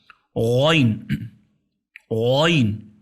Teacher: اگر آپ اردو میں جائیں گے تو یہ پتلا ہے اور باریک ہے، لیکن عربی الفابیٹ میں آئیں گے تو یہ موٹا حرف ہے، غین غین۔ یہ ادنى الحلق، گلے کے شروع سے ادا ہوتا ہے، شروع سے، گلے کے شروع سے اس کا تلفظ ہوتا ہے۔